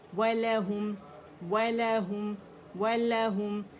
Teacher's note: واو کے مخرج پہ جائیں گے، گولائی کے ساتھ ہے یہ